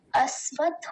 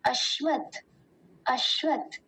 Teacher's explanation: पहले भाग को देखते इसमें जो अकार के बाद आधा आधा तालव्य सकार है और उसी के साथ वकार है